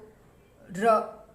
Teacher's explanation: र का उच्चारण करो र, तो ऊपर मूर्धा से होता है